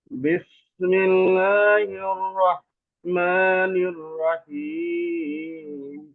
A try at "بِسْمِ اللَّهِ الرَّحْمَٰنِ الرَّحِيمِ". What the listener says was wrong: র, রা না, র হবে।